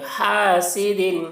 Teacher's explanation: ہا کو حلق سے ادا کر رہے ہیں